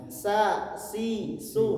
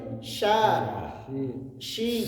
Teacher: huruf syin ini nempel ke langit-langit Nah itu makud maksudnya ke langit-langitag keras bukan langit-langit lunak kalau